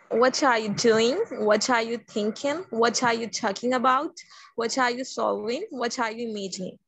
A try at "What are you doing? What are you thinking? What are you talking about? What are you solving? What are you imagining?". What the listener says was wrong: Perfect, dear. Outstanding.